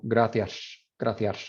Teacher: Spain's S is a little bit different. They have that sh, like a sh sound. So it's like gracias, gracias. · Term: ápico alveolar